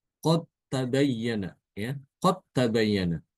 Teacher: Contoh lain, qod tabayyana ya qad tabayyana dal setelahnya ta. Jadi dalnya itu diidgamkan ke ta langsung ya. Itu dinamakan dengan idgham mutajanisan ya.